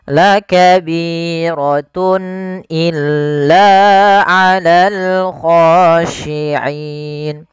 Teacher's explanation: Kemudian pada lafal tun illa di sini ada izhar halqi, yaitu suara tanwinnya harus dibaca dengan jelas karena ketemu dengan huruf hamzah. Dan ini kita namakan dengan izhar halqi.